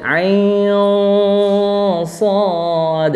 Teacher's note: akhir dari Ain adalah nun sukun bertemu dengan Shad berarti ikhfa Hakiki jadinya samar dan dengung